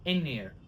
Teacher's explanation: We drop the TH of there. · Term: dropped TH